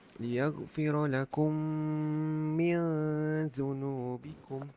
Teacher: idgham al-ghunnah, ikhfa hakiki kena dengung 2 harakat